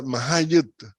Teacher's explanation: todos esos cambios son cambios de R o L por T, porque perdieron la vocal que las protege